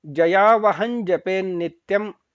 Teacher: ಜಯಾವಹನ್ ಜಪೇನ್ ನ ಪೂರ್ತಿ ಹೇಳಬಾರದು ನ್ ಬರಬೇಕು